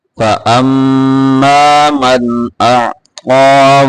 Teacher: غنہ پورا کرنا ہے میم کے اوپر